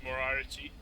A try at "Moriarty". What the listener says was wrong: Not Moriarty. There's no I. It's Moriarty. Moriarty. Sort of just try and ignore the second R.